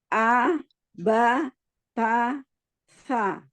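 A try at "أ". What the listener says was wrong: Iya, kuatkan lagi di huruf hamzah, jangan a, ba, ta, sa.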